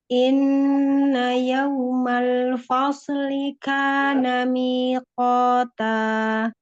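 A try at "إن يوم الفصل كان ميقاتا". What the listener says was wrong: Ya, la fasli. Sotnya nggak mantul. Fasli. Yaumal fasli. Yaumal fasli kana miqata.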